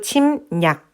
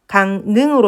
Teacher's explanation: 받침 이응 뒤에 연결되는 리을이 니은으로 발음된다라는 것을 알 수가 있습니다. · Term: 비음화